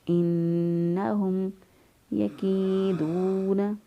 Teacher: میم ساکن کے بعد دیکھیں نہ با ہے اور نہ ہی میم ہے، لہذا یہاں پر اظہار شفوی کریں گے